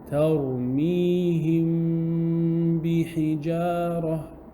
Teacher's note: So then the Meem will be hidden. Ikhfaa, shafawi will take place.